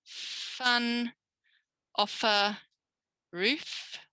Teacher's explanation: now it's a lip and a teeth